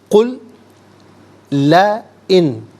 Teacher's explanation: قل لا ان ملا کر پڑھیں گے، لا ان، قل میں لام ساکن ہے تو لا ان کی لام کے ساتھ ملائیں گے